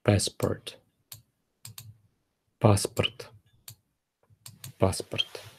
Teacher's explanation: The letter O, when it is stressed, it is read as O, but when it is unstressed, like in this word, it is read as A.